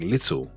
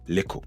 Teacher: switching out TT for K when it's in the middle of words. So a word like little can become lickle.